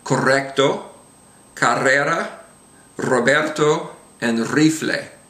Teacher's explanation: the Double R together uh is this rolled R sound